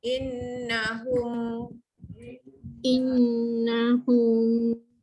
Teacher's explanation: nun sabdu dengungkan wajib hunah.